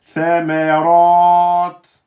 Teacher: Vous allez faire qalqala. Et si vous dites samarat, samarat, c'est pas bon. Hein, il faut bien bloquer et lâcher. Il faut qu'on l'entende. · Et là, le ra, il est emphatique parce qu'il porte une fatha.